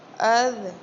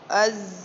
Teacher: ذال کو نرمی کے ساتھ پڑھا جائے گا اور زا کو سختی کے ساتھ پڑھا جائے گا